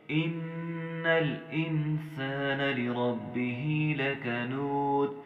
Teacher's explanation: یہاں پہ ہم نے نون مشدد پہ غنہ کرنا ہے ، نون کو ہم نے لام کی جزم کے ساتھ لگانا